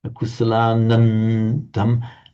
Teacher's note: So the m there, the anuswara, the subdotted M, is followed by a dental the. So it comes out just like an ordinary N.